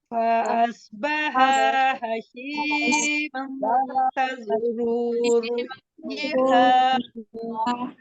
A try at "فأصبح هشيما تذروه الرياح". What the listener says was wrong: सौद की अदायगी को दुरुस्त कीजिए। सौद पुर है, इसको आपने बारीक नहीं पढ़ना है। फ़अस्बहा नहीं है, फ़अस्बहा है।